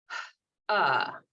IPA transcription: ʌ